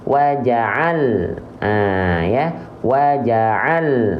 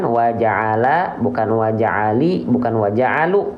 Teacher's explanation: makhrajnya waja'al ahah ya wa'al bukan waja'ala bukan wajaali bukan wajaalu enggak ada bunyi a i u-ya karena dia sukun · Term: lam dalam kondisi sukun